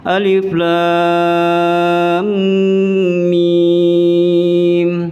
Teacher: Ini lam itu panjang 6 harokat. Mimnya juga 6 harokat.